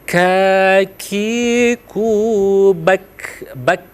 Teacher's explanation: Jadi ka itu di langit-langit ya. Tapi dia langit-langit dalam. Jadi kalau kita ini biasanya kalau di gambar makhrajul huruf itu diberikan titik di langit-langit itu tempat keluarnya. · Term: huruf kaf